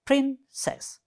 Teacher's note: It has just 2 syllables, and first one is the stress.